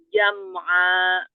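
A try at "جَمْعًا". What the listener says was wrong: Jangan nyangkut di hamzah. Jam'a.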